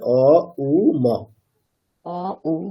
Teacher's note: হুম next হচ্ছে আমাদের উকারের ধ্বনি হচ্ছে বক্ষ উ প্রদেশ থেকে হবে। উ আর হ্যাঁ মকারটা যখন বলবো সেটা একেবারে মাথাতে, মানে ওখানে গিয়ে একটা ম ভাইব্রেশন হবে